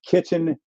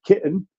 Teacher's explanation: glottal stopping is traditionally a British feature